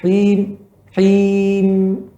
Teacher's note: Pada mim di ujung ada sifat gunnah dan sifatnya mengalir sedikit suara.